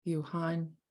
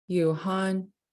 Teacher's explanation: it written so it's y-e-e-w-h high tone a a n so the first vowels are long and low and then the next one is long and high so you'll hear a tone switch